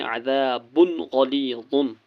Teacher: غین حرف حلقی ہے اس لیے دو پیش میں نون کی آواز کو ظاہر کرنا ہے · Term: اظہار